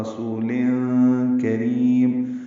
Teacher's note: کاف باریک ہے، را بھی باریک ہے، را کو لمبا کریں گے، وقفاً مد عارض للسکون ہے اور میم ساکن پہ اظہار ہے کہ بے شک یہ ایک معزز قاصد جبریل کا قول ہے.